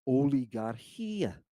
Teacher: There's no h sound on the front of it. There's no puff of air. It's not there. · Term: smooth breathing